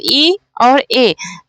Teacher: अग्रस्वर जिसमें हमारी जीभ आगे की ओर उठती है, तो अग्रस्वर ई ए है ना।